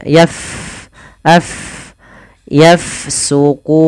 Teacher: Kemudian pada lafal fa bertemu dengan huruf maaf huruf fa di ya sukun maka kita alirkan nafasnya